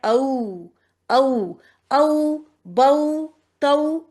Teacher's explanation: पहले अ को निकालें और फिर व का मुंह गोल करें और आ जाए। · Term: मुड़ती आवाज